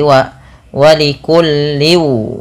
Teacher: Ketika tanwin bertemu wau ini usahakan dimasukkan kepada huruf wau ya. Karena bacaannya dimasukkan dan ini kita kenal dengan istilah namanya idgham.